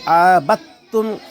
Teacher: جیسے اس کو یعنی عبد، یہاں اس کو ابتم پڑھیں گے، ابتم، عین زبر ع، با تا زبر بت، تا میم پس تم، ابتم۔ دال لکھنے میں آئے گا، پڑھنے میں نہیں آئے گا۔